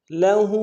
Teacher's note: ہا کے اوپر الٹا پیش ہے، ایک الف میں کھینچیں گے